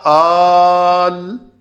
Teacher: دوسرے حمزہ وصلی کو ساکن کر کے الف مدہ سے بدل دیتے ہیں۔ تو یہ الف سے بدلا ہے، یہ حروف علت سے، الف مدہ سے نہیں، حروف علت سے بدل دیتے ہیں۔